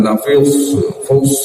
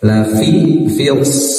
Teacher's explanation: fi huruf tipis, shad huruf tebal, ya. Hati-hati jangan sampai terlalu tebal fi, yang jangan lafils fals gitu, ya.